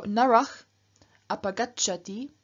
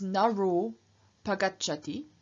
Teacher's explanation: And if you have ach plus a vowel at the beginning of the next word, again the Visarga drops, and we're left with just a, except, and this is exception 1 that you can here see on the right, if you have ach plus short a, then the ach changes into o and the a disappears. And so narach apagachati becomes naro pagachati, the man goes away.